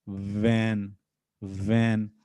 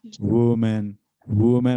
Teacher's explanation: तो अब वैन बोलेंगे तो आपके अपर टीथ लोअर लिप्स को टच करेंगे